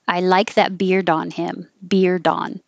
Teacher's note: you're not going to hear the d at the end unless there's a word after it that starts with a vowel